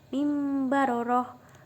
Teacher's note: Ketika dibaca bunyi tanwin berganti menjadi min sebagai tanda iklab. Di atasnya ada huruf mim kecil.